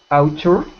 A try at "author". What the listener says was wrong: So we pronounce that not ow, even though it's A and U, we pronounce it like aw. Author. Author. Author. With your tongue out of your teeth like this.